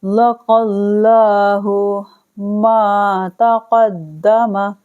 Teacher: لام کو موٹا پڑھنا ہے کیونکہ زبر ہونے کی وجہ سے لام کی باریک کی جگہ موٹا پڑھیں گے